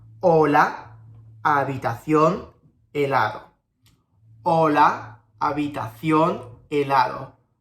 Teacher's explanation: As you heard, I didn't pronounce the H.